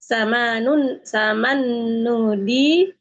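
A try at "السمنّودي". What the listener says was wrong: Samannu itu nunya bertasydid.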